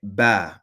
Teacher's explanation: That's a sound, ba, with the two lips coming together and then you pronounce it.